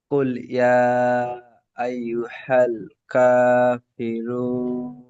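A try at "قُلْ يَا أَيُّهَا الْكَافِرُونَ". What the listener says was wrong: আইয়ু হাল বলছেন, হাল হবে না, আইয়ু হাল, ছোট হা। আইয়ু হাল পুরো আওয়াজটি এই বুকের এখানে শুরু থেকে বের হবে। হা।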